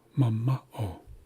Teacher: this syllable in the middle is being uh stressed. It's got an acute accent. So we're placing emphasis on the second syllable.